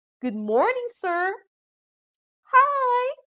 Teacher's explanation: we also observe rising intonation when we are greeting someone